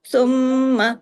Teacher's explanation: عندہو، عندہو، یہاں پہ اخفا حقیقی غنہ کاملہ، ہاں الٹا پیش ہو جو ہے یہ واو کی مقدار کے برابر پڑھا جاتا ہے۔ ثم، میم پہ تشدید ہے، ڈبل میم ہے، غنہ ہوگا